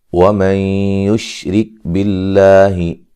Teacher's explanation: نون ساکن کا ادغام مع الغنہ ہے · لفظ اللہ کو باریک پڑھیں گے، اس سے پہلے زیر ہے